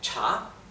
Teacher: es el tono ascendente cha